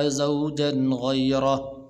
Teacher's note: فلا تحل له من بعد حتى تنكح زوجا غيره، یہاں پر غنہ نہیں کریں گے اس لیے کہ آگے غین حروف حلقی میں سے ہے